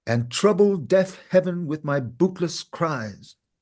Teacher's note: following a a natural stress boot is actually on the unstressed by emphasizing or giving the stress on boot of bootless then cries is also on the stress instead of ending on